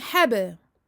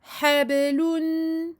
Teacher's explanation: Qalqalah. On fait rebondir le ba.